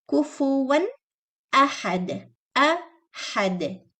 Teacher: making hamza clear, making ha airy, not ha, and do qalqala and dal.